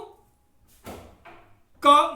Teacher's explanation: का बोलने की तैयारी जैसे ही हम करते हैं तो हमारे कंठ का भाग एक दूसरे से चिपकता है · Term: स्पर्श व्यंजन